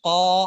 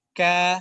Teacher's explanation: قاف میں دیکھیں قا، الف موٹا ہو گیا، اور چھوٹی کاف میں دیکھیں کا، باریک ہو گیا، کانا. ٹھیک ہے، باریک ہو گیا.